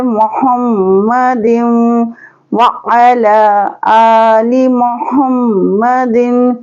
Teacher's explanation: दाल को हम वाव से मिलाएंगे, वाव के ऊपर तशदीद है